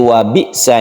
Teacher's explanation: wa bi'sa ini ada sukun hamzah bukan ain ya. Wa bi'sal masir, tipiskan roknya karena sebelumnya ada kasro dan sukun ya ini.